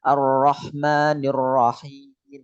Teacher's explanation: yang dimainkan itu lidahnya lidahnya agak naik belakangnya